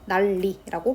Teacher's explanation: 그렇기 때문에 난리가 아니라 니은을 리을로 바꿔서 난리라고 발음을 해야 정확한 발음이 되겠죠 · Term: 유음화